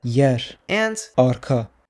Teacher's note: the rhotic is pronounced as a voiceless tap